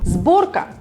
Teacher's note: If letter S stands in front voiced consonants, it sounds like Z.